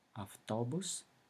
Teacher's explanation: When unstressed, A sounds shorter and fainter at the beginning of a word, such as avtobus, bus, as well as in a syllable immediately before the stress.